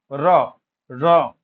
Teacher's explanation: কেঁপে উঠছে জীভার সামনের অংশটা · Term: কম্পনজাত ধ্বনি